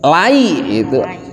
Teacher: Jadi dari huruf A ke I dibaca semua lai, jangan lae. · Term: mad lin